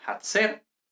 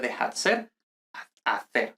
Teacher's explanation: la F inicial eh seguida inmediatamente de vocal aspira